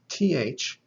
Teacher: the theta is a voiceless dental aspirate it is th without vibrating the voice box